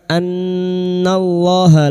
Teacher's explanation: nun yang bertasdid gunna musyaddadah kita dengungkan selama tiga harakat. Annallaha lam jalalah yang didahului fathah kita baca tafkim.